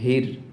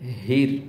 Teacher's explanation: হাই হুত্তি বলার সময় বাতাসের একটা সাউন্ড করতে হবে পাশাপাশি আপনার গলা চেপে উচ্চারণ করতে হয়